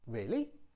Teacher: you can use a rising tone to express doubt